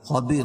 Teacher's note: قاعدہ ہے کہ رائے ساکنہ سے پہلے یا ساکن ہو تو رائے ساکنہ ہر حال میں باریک پڑھی جاتی ہے